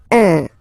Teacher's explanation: Of course, after that you will master it without any problem and without any doubt, but you've got to pronounce it like un. So it's what we call the nasal, so it goes in your nose, okay? So if you listen to me, you don't hear any N